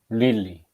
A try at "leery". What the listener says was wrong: not lily. Leery. Lee ra raw. Leery. Leery. Not lily. I can hear it. Lily. It is not lily. It is leery. Two break into two sound. Lee and re. Lee re. Leery.